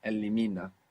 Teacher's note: we still have the accent on the penultimate syllable